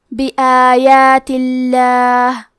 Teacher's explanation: آخری میں کیونکہ تا کے نیچے زیر ہے تو ہم لفظ الجلالہ مطلب کلمت اللہ کے لام کو پتلی آواز میں پڑھیں گے